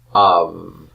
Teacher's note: this is pronounced av, not ab with a hard B, but the B is a fricative B. Av. And it sounds like a V sound.